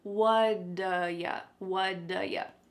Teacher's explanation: Nope, that T at the end of the word what is going to change to a D sound. This is really typical of American English, where a T that's surrounded by vowel sounds is going to change to a D. It's called a flapped T, and it just kind of rolls off your tongue in a smooth way.